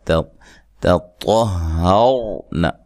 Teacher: پہلی تا کو باریک, دوسرا طا کو موٹا ادا کرنا ہے